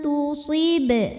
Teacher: maka nun sukun dibunyikan samar-samar, siap-siap menuju ta disertai bunyi dengung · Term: ikhfa aqrab